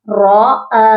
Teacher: را کو ہم نے لمبا نہیں کرنا, را کے آگے جو حمزہ ہے اس کو ہم نے سیپریٹ پڑھنا ہے. را زبر را, حمزہ کھڑی زبر آ, را آ.